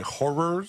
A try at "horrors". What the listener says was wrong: Horrors. Like Halloween Horror Nights. House of Horrors.